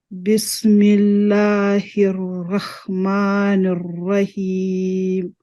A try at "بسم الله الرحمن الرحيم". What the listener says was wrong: Rahim, this is ha, not ha. And do the ra heavier little. And the kasra, don't say be, start with b. meme also need to be like, don't say ma, rahma. So we say rahma, ma is heavy meme. I need to say ma, rahmani, and not rahmani.